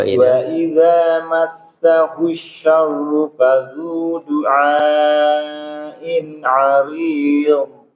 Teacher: huruf dot itu harus betul-betul kita tafkhimkan, kita tebalkan